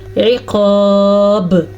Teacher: اور آگے شدید العقاب میں عین کے تلفظ کا بھی دھیان رکھنا ہے اور قاف کو موٹا کر کے پڑھنا ہے اور با پہ کلکلا کرنا ہے